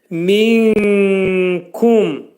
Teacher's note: Kəf hərfinin məxrəci dilçəyin sonundadır.